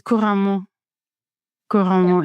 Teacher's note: It's like every single syllable gets the same emphasis.